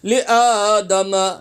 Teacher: حمزہ کھڑا زبر آ ایک انگلی کی مقدار کھینچ کے پڑھیں گے